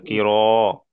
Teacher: ميم কির, রটা পুর হবে, র এর كيرا উপরে যাবার, র পুর, মুখটা গোল করে পড়তে হবে, কির। كيرا হুম।